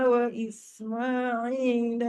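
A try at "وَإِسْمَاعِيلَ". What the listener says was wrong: Ismaili bunyi me kepit lidah. Jangan kepit lidah.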